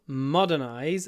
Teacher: The stress is on the first syllable modernize